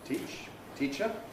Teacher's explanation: It's subject to pre-fortis clipping because of the ch that follows, teach, teacher, and it's subject to rhythmic clipping because of the weak vowel that follows, the syllable So this vowel is subject to two kinds of clipping, and the result is it's not very long in its duration.